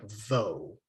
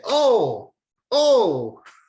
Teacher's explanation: So if you see this vowel, the cholom, with a vav, the whole thing just makes an O sound. It does not make vo. There's no v. The v is gone.